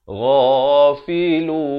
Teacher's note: Ghain pula makhrajnya di mana? Makhrajnya di hujung kerongkong ini.